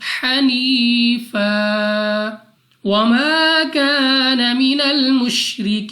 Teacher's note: یا ساکن سے پہلے زیر یا مدہ، مگر نون کو وقف میں کر دیں گے ساکن، اور یا مدہ کو مد عارض کے ساتھ بدل کر 2 نہیں بلکہ 3، 4 یا 5 سیکنڈ تک کھینچ کر پڑھنا ہوگا